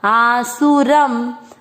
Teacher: शब्द पूरा होने के बाद लास्ट वाले अक्षर पर अनुस्वार है तो उसको पढ़ेंगे आधा म